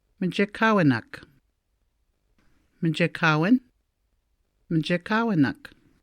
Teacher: Notice the first I is a weak sound and often not pronounced.